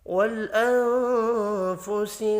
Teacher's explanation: نون ساکن کے بعد فا ہے، اخفاء حقیقی ہوگا